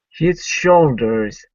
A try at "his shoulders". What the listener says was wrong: The first time you put more of an emphasis on the S than the SH. And so it was, and his soldiers. And it came out like soldiers, like people who are in the army. Okay, that would be soldiers.